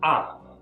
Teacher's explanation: this comes down in pitch okay it's quite an abrupt sound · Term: tone four